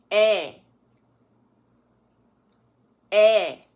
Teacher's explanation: this combined vowel is to have this swing there okay so we don't want to say a right we want to chop that tail off and we want to go air now these particular combined vowels